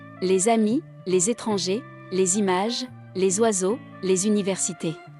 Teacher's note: S is pronounced as Z when followed by a word beginning with a vowel